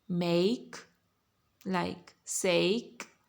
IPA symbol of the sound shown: eɪ